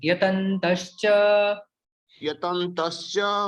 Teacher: ये विसर्ग का श बन जाता है